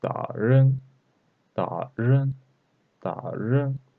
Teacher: Here third tone and second tone. We should read like half third tone.